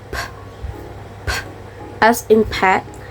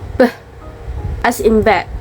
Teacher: It's voiceless, no vibration in the throat. Where b is voice, you feel vibration in your throat.